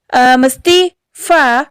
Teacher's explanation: Huruf fa ini bibir bagian bawah taruh di ujung seri bagian atas.